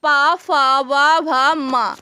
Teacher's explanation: पा वर्ग का उच्चारण स्थान हो जाएगा ओष्ठ। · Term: ओष्ठ ध्वनि